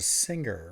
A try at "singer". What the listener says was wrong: You said singer. You pronounced that G real hard.